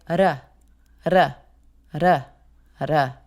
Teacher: A flap is when you have a D or a T between two vowels. And it kind of makes a little bit of a tap of the tongue on the roof of your mouth, almost like a combination between a T, a D, and an R.